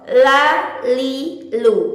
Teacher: lam itu dikeluarkan melalui Sisi lidah bagian depan Sisi lidah bagian depan yang mengenai pada gusi gigi seri atas